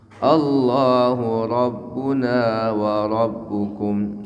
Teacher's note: Alif lam jalalah maka dibaca tafkhim karena sebelumnya harakat fathah.